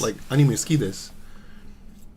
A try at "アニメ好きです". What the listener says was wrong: I think, the way you say anime, it's a bit like, not flat, and it needs to be flat.